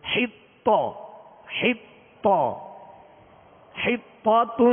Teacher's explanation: طا کو کھینچیں گے نہیں کیونکہ اس کے اوپر صرف زبر ہے، آواز اور منہ کھول کر زبر ادا کریں گے، اور طا کو پر کریں گے مگر بغیر ہونٹ گول کیے